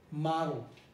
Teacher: look ma i'm producing a syllabic l